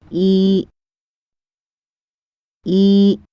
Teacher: the tongue is raised higher than it would be to pronounce its English counterpart